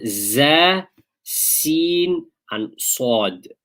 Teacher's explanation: when you pronounce these 3 letters, which are called the huruf safiriyah, they are pronounced with a whistle